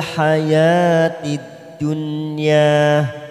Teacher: huruf nun sukun yang bertemu ya kita baca jelas